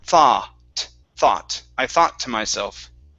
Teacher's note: so no ooh sound there so only an ah so it's one one vowel sound